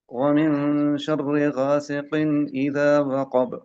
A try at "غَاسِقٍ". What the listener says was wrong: یہاں پہ بھی دیکھیں غا سکن پڑھ رہے ہیں غا نہیں غا میرا منہ دیکھیں غا سکن آپ پڑھ رہے ہیں غا ایسے ہونٹ پھیلے ہوئے نہیں ہوں گے جب موٹا حرف پڑھیں گے تو ہونٹ پھیلے ہوئے نہیں ہوں گے غا ایسے نہیں غا